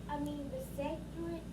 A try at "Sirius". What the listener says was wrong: There's no C in that word. Sirius.